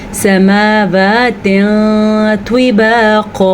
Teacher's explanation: جیسے اس کو کیا چھپایا ہم نے، ویسے اس کو پڑھنا تھا سماواتن طباقا، لیکن ہم یہاں پہ آپ چھپائیں گے نون کی آواز کو، کیسے، سماواتن طباقا، کسی حد تک غنہ بھی ہوتا ہے اور نون کی آواز کو چھپا کے پڑھتے ہیں